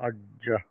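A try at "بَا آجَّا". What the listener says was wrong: আহ, মাঝে কিন্তু একটা ভাই গ্যাপ হয়ে গেল আপনার, হ্যাঁ? একসাথে কিন্তু বা, আজ্জা, তারপর বা, এরকম, তারপরে একটু গ্যাপ হয়ে কিন্তু ধরবেন না আবার, হ্যাঁ? একবারে হবে।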